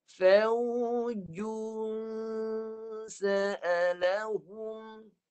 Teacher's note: Jadi dengungnya untuk huruf sin, tanwin bertemu sin, dengungnya di bahagian tengah hidung. Tengah hidung ya, tengah.